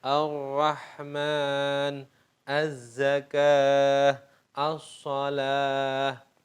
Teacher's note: lamnya hilang ada wujudnya tapi nggak ada bacaannya karena hilang dilebur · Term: lam syamsiah